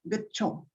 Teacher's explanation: The central unrounded lax vowel between half closed and closed positions follow g, voiced velar plosive. It is followed by unexploded denti-alveolar plosive.